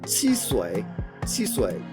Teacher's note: you're not getting those CH sounds or the sh sounds in the southern Mandarin